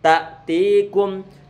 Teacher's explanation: Awalam taku ta'tikum taku, ini kunya dia didomahkan, maka bibir perlu untuk dimonyongkan. Ta'tikum, jangan terlalu ditekan ta karena nanti dia akan lari ke arah makhrajnya huruf ain. Sehingga kita baca ditekan cuma jangan terlalu kencang.